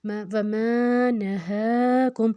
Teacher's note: ہا کو ہم نے لمبا 2 حرکت کیا کیونکہ اس کے اوپر کھڑی حرکت ہے، کھڑی زبر ہے.